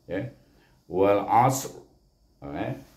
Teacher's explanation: Lidah kita terletak di makhraj ra, iaitu antara hujung lidah dengan gusi kacip, gigi kacip atas, jadi mesti kita letakkan dia, wal asr.